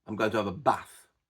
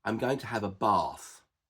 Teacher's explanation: the A is short in their dialect and long in my dialect